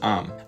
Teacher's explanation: in Boston, you can still hear people pronouncing the word arm as am. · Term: R dropping